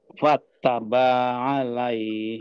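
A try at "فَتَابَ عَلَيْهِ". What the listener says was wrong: Nah, hati-hati taknya tidak ada tasdidnya banyak. Fataba langsung.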